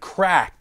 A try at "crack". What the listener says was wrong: You need to pronounce your R's better, buddy.